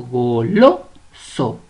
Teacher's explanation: Tiene la mayor fuerza de voz en la penúltima sílaba. Es decir, esta palabra es grave sin tilde.